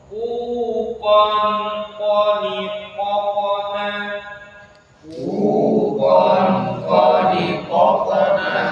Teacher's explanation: Ketika tanwin kita baca dia ikhfa ya, harus dengung.